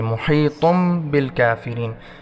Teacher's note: طا کے 2 پیش بنے ہوئے ہیں، اس کے ساتھ میم ہے، اس کو طا کو میم کے ساتھ ملائیں گے